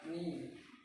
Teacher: Kemudian hukum yang ketiga yaitu adalah mat tabi'i yang bunyinya ni. Karena ya sukun didahului oleh huruf berharokat kasroh. Cara membacanya dengan dipanjangkan selama 2 harakat.